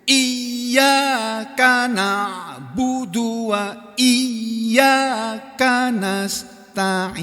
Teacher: Tapi kalau iya, ya-nya double kan itu, iya harus ditekan gitu. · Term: nabr